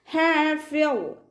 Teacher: ഹ ഇൻ്റെ കൂടെ അലിഫ് മദ് വന്നു, 2 കൗണ്ട് നീട്ടിക്കൊടുക്കുക. ഹാഫിൽ ഹ തൊണ്ടയുടെ മധ്യഭാഗത്തു നിന്നാണ് വരുന്നത്, സൗണ്ടിനെ ക്ലിയർ ആക്കി കൊടുക്കുക. ഫ ലൈറ്റ് ആക്കിയിട്ട് ഉച്ചരിക്കാൻ ശ്രദ്ധിക്കുക കേട്ടോ.